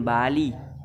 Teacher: vokal I diucapkan I rendah